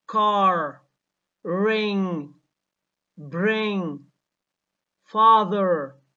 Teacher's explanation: retroflex R, where the tongue is curved in the mouth behind the alveolar ridge. And this is found in British English and American English. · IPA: /r/